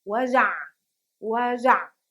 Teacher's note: Again, you hear the ayn at the ending, but not so much as if it was at the beginning.